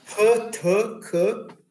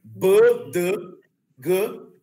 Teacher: E as desvozeadas é as que não tem a tremidinha aqui mais forte aqui na garganta. Então, P, T, K é mais suave aqui na garganta. Agora, B, D, G vibra mais aqui.